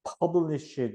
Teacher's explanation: 그래서 이제 publish 이렇게 턱 하고 터지는 소리가 나요. 그래서 공기를 발산시키는 방식은 파열음이라 그래 가지고 팍 터지는 소리. 그래서 공기 발산 방법은 파열음.